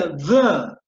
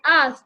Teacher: the is a heavy, a voiced sound, while earth is a voiceless sound.